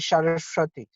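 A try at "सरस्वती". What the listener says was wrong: See, you're saying Saraswati. In Bengali, you're saying Saraswati, but it's actually Sarasvati. Sarasvati. Yeah, but in Bengali, people will say Saraswati. We want to get the Sanskrit pronunciation, and the Bengali pronunciation is going to be a little bit different.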